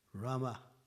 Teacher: So the sound is guttural. You pull in the A.